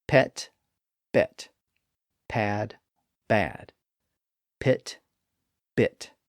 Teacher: the vocal folds are left open and silent when we make the P sound, but they're narrowed and activated when we make the B sound. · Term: P is voiceless